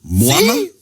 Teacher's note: We stress in the first syllable of the word in this context.